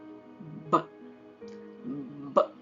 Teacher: ಈ ತುಟಿಗಳನ್ನ ಪೂರ್ತಿ ಮುಚ್ಚಿಬಿಟ್ಟು ಗಾಳಿ ಓದುತ್ತೀವಿ. ಈ ಗಂಟ್ಲಲ್ಲಿ ವೈಬ್ರೇಷನ್ ಕೊಡ್ತೀವಿ. ಬ ಬ ಹೀಗೆ ಮಾಡಿದಾಗ ಸೌಂಡ್ ಬರುತ್ತೆ.